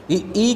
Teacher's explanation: तो ई का उच्चारण स्थान होता है आपका तालु